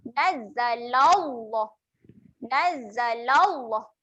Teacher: kalimah Allah dibaca dengan tebal.